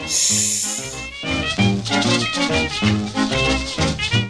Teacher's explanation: El so, S, és quan no vibren les cordes vocals. L'aire s'escapa entre les dents. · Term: S sorda